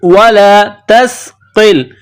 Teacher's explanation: कफ को मोटा करना है